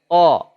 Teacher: Ya, tebal. Ketebalannya isti'la saja. Tidak sampai mutubaqah. Tidak sampai lengket.